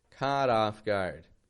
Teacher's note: there's a flap T in the middle, is there not? Between caught and off, caught off guard.